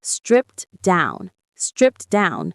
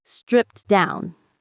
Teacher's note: The T sound at the end of stripped is very soft.